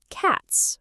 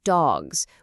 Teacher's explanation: It's cats, right? With a sharp S sound. Okay, now how do you say the plural of dog? It's dogs, with more of a buzzing Z sound.